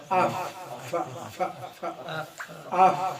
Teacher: عربی کا ہے اوپر والے دو دانت، نیچے والا اندر کا ہونٹ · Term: فا کا مخرج